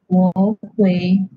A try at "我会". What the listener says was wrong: Hello, you kena sebut 我会. 会 kena tekan. 我会.